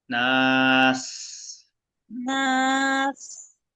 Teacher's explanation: সিনটা বাতাস বের হয়ে স্পষ্ট হওয়া চাই